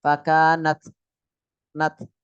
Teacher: Ta biasa akan kelihatan ketika sukun. Fakanat nat. Nah, dikit ya desisnya itu. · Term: hams